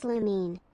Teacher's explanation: Lumen is pronounced as lumine. The emphasis is on the second syllable and it rhymes with marine.